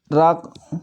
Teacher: जब इसको बोलते हैं तो जीहा जो होती है वो ऊपर की तरफ मुड़ जाती है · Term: लुंठित व्यंजन